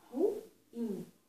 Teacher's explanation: no ruim, o acento tônico é mais forte no fonema I, no som I.